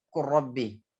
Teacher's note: Lam bertemu dengan ro, dia meleburkan ke ro. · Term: Mutaqaribain